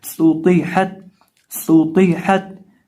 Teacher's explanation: सीन के अंदर हमने सीटी निकालनी है और तो को पुर करना है